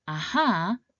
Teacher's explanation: The sil tone starts at the mid range, dips long and then quickly rises back to the mid range where it first started. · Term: third tone